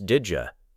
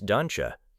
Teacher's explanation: This happens because the final sound of the first word and the Y sound of the second word combine.